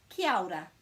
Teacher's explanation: kia ora is just joining those two middle vowels together